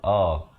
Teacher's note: hamzah itu makhrajnya di pangkal kerongkong